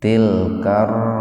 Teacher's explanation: Ro-nya di domah dan sebelumnya di fathah. Jadi dimasukkan ke huruf ro dan ro-nya dibaca tafkhim, dibaca tebal.